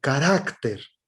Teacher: Termina en consonante y su sílaba tónica es la penúltima.